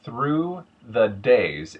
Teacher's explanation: TH, the hard TH, becomes a T. The voice TH, becomes something closer to a D.